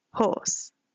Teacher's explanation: the silent R is a really big characteristic of the Southern accent